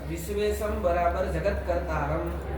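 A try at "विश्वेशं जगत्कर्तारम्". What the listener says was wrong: हाँ ये बराबर क्या बोल रहे हो तुम?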